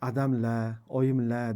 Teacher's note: Endi she'rlarda ko'plik affiksi quyidagi variantlari mavjud, ya'ni ularda o'sha la variantli Toshkent she'rasida bilasizki, adamla, oyimla deganda lar hurmat ma'nosini la deb r tovushini tushirgan holatda ifoda etishadi